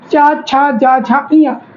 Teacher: आपकी जो जीभ है, जीभ वो ऊपर के तालु को टच कर रहे